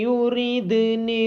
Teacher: دال ساکن پہ قلقلہ کیا جائے گا